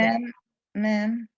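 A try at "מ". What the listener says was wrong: No, it's a mem, but what's the sound? Not mem. What's the sound? M. Not meh, because that would be a vowel. It's m.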